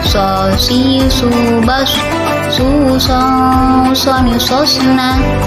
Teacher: Huruf so sama halnya dengan cara melafalkan huruf sin, yaitu sifat dan karakternya pun tidak jauh berbeda dengan huruf sin. Cara membedakan huruf sin dan so yaitu suaranya menebal saat melafalkan huruf so